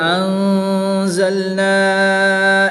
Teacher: وَلَقَدْ أَنزَلْنَا إِلَيْكَ آيَاتٍ بَيِّنَاتٍ۔ نون ساکن کے بعد حرف اخفا میں سے زا ہے تو یہاں پر اخفا ہوگا یعنی غنہ کر کے پڑھیں گے۔